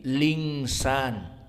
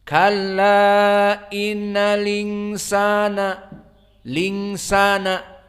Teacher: Karena hamzahnya dihilangkan, tinggal harokatnya dari hamzah kasroh itu insan pindah kepada sukun lam. Maka lam tidak bersukun lagi. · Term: naql